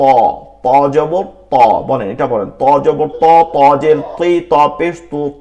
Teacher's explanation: ত উচ্চারণটা করতে হবে আমাদের ভালো করে, ত। জিহ্বার আগা সামনের উপরে দুই দাঁতের গোড়া থেকে পেট পর্যন্ত মোটা করে ত